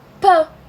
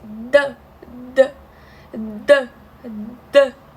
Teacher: Vocês não vão sentir vibração quando vocês falam pã, mas falem d. Vocês vão sentir uma vibração